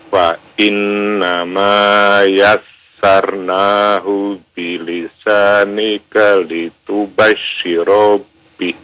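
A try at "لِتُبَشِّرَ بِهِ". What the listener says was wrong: Litubashshira bih. Shinnya bertasdid ya. Jangan dipanjangkan ro-nya ya.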